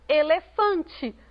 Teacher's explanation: elefante última penúltima é paroxítona